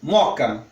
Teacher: eu tenho ouvido as pessoas pronunciando só como moca, como se fosse uma crase, como se eliminasse um dos Os.